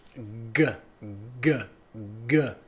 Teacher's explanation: O som do G, G, G, G. Então o G há uma vibração aqui, é um som vozeado